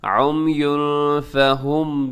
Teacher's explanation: یعنی تنوین کے بعد فا، یہاں ناک میں چھوائیے گا آواز کو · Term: اخفا